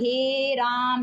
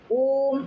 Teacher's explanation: दीर्घ स्वर से भी ज्यादा समय लगता है। इनके उच्चारण में दो से अधिक मात्राओं का समय लगता है। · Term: प्लुत स्वर